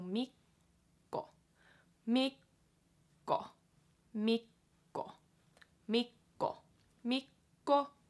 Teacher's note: Mikko has the double K again, so just remember to kind of sit on that K for a little longer.